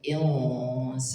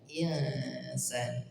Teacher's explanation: dibaca samar didekatkan ke huruf Sin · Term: ikhfa